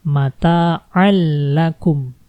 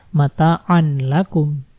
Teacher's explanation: Jadi tanwin menghilang dan dimasukkan ke dalam huruf 'la'. Nah, inilah yang disebut memasukkan tanpa bersenandung.